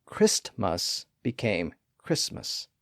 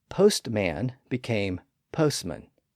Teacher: with two syllables where the first syllable ended in St that t sound was often lost in the transition from the first syllable to the second syllable